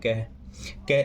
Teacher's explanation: जैसे हम किसी शब्द को बोलेंगे, देखो जैसे हमने बोला क हवा कम निकली मुंह से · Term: अल्प प्राण